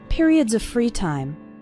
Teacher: the word of runs into the word free